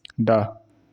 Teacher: मूर्धन्य, अल्पप्राण, घोष व्यंजन वर्ण का उदाहरण है।